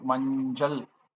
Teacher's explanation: coming after its nasal counterpart, which is nya or inj, this cha becomes ja, right? So as in the word manjal, so we say manjal, not manchal, manjal.